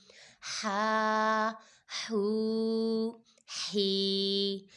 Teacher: اس ہا کو ہم لوگوں نے حلق کے درمیان والے حصے سے ادا کرنا ہے اور اس کی آواز پراپر نکالنی ہے۔